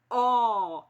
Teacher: a letra e se pronuncia é a letra O se pronuncia o é bem aberto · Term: o som é aberto